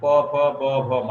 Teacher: কোনগুলি আমরা উচ্চারণ করলে করেই দেখতে পারি যে ক খ ব ভ ম এগুলি ওষ্ঠবর্ণ, অর্থাৎ আমাদের ঠোঁটের উভয় ঠোঁট মিলে আমরা এটি উচ্চারণ করতে হয়, এজন্য এগুলি ওষ্ঠবর্ণ।